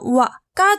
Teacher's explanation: 와는 오를 거쳐서 아로, 빨리 발음해보면 와가 되죠. 이때 이 오도 반모음 오라고 합니다.